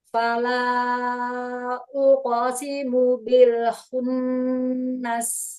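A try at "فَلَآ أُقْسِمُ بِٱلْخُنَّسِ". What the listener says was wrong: Ya, lebih cepat lagi qalqalahnya. Uqo, uqo. Naikin ke langit mulut suaranya. Fala uqsimu. Ya, mad jaiznya panjangkan lagi.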